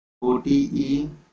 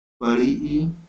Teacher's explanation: ह्रस्व ईकार को बोलने में कम समय लगता है, दीर्घ ईकार बोलने में ज्यादा समय लगता है